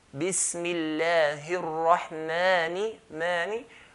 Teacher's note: we're going to stretch that mim, the letter before the alif, to 2 counts. Because alif is one of the 3 letters, the huruful mad, the letters of extending, letters of stretching.